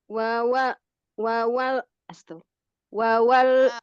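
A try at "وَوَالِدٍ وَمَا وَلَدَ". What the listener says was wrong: Waw yang pertama eh waw yang pertama dan yang kedua itu bedakan nadanya, bukan nada ya, tapi tekanannya. Wawalidin wama walade.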